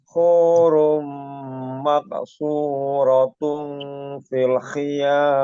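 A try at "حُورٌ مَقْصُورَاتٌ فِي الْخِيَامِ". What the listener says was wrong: Ro kurang panjang.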